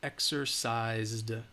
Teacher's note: even though it's spelled with an S, it's the Z sound, that Z, Z, Z. It's voiced. So because of that, exercised, you should have said D.